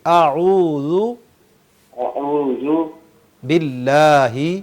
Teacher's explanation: تو حمزہ جو ہے وہ بالکل شروع سے ادا ہو جاتا ہے، حمزہ اور ہا حلق کے آخری حصے سے. اعوذ، جی اعوذ اعوذ باللہ، باللہ باللہی نہیں.